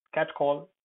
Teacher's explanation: Cat call will have both the syllables stressed because it's a compound noun